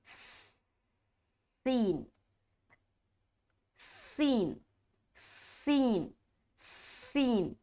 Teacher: زبان کی نوک اور ثنایا سفلا کا کنارہ ہے اور کچھ حصہ ثنایا علیا کا اس میں ٹچ ہوتا ہے